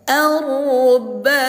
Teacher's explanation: cara membacanya dengan didengung didengungkan dua harakat dengungnya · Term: idgham bighunah